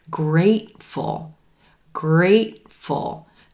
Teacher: thankful thankful you'll hear something similar in the word grateful grateful that second syllable is super quick we're stressing the first syllable